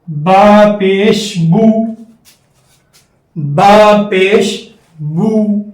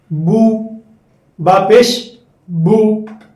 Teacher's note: پیش کی مثال، با پیش بو، با پیش بو. جب آپ بو ادا کریں گے تو آواز آپ کی آگے کو جائے گی، منہ ہونٹوں کو گول کر کے آواز آپ کی آگے کو جائے گی